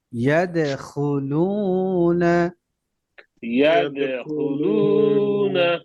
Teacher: দালে কলকলা, আওয়াজ নিচে যাবে, লু এক আলিফ মাদ।